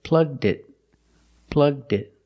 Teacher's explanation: But when I say it complete, plugged it in, it's easier to link the D sound to the next word, it.